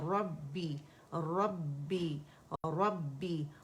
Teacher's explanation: را جب فتح کے ساتھ ہوتی ہے مخفم پڑھی جاتی ہے